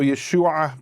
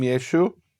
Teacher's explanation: They didn't pronounce the ayin, so Yeshua became Yeshu.